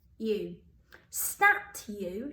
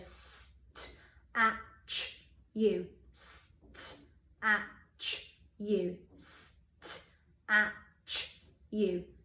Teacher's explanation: No, in this one, because we've got that U sound at the end, that T makes like a ch sound